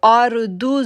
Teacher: اب دیکھیں ہم نے پڑھا اذا زلزلت الارض، ضاد موٹا لیٹر ہے، موٹا کر کے پڑھیں گے۔ ارض، را کو پر آواز پڑھیں گے کیونکہ را سے پہلے زبر ہے